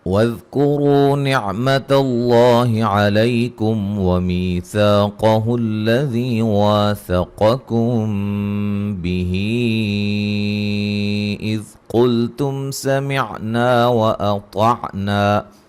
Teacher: لفظ اللہ کو خوب موٹا ادا کریں گے، اس سے پہلے حرف پر زبر ہے